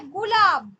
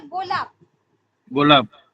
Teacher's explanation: অঘোষ ধ্বনির প্রভাবে ঘোষ ধ্বনি যখন অঘোষ ধ্বনিতে পরিণত হয় তাকে বলা হচ্ছে যে অঘোষী ভবন